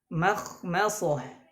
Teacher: karena setelahnya huruf tebal, maka mimnya jangan ditebalkan. Mim tetap harus tipis.